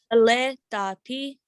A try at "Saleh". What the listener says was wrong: Just say this H, Saleh.